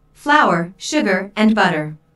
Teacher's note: Notice that this is a list, so there are short pauses between each item. Notice also that each ingredient is stressed because this information is important.